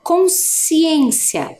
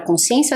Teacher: o SC parece que faz só o som do S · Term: dígrafo